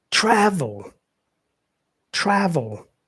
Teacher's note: So the first syllable is stressed. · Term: stressed syllable, primary stress